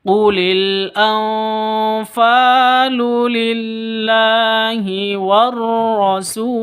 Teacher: rasul mad arid lisukun, panjang boleh 2, boleh 4, boleh 6 ketukan